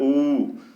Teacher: ऊ तो जीभ का पश्च भाग काम करता है, अतः यह पश्च, इसीलिए इसे पश्च स्वर है। ऊ के उच्चारण में ओष्ठ वृत्तमुखी या गोलाकार, ओठ वृत्तमुखी या गोलाकार तथा जीभ ऊपर उठने के कारण संवृत स्वर भी होता है, संवृत स्वर।